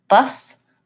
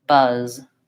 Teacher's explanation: the first one has the voiceless s and the second one has the voiced Z this word is longer